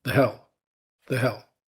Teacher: Can you hear how short and weak the vowel in the word the is? We leave it with absolutely no breathing room between it and the word hell.